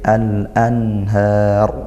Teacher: Izhar halqi. Dibaca jelas nun sukunnya tidak didengungkan dan dialirkan.